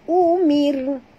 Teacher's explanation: Ra' bila dia mati, huruf sebelumnya baris bawah. Kita kena baca tipis. Ra' tarqiq.